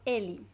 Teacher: When we speak naturally, the second E, we usually don't hear it, or it is very, very weak.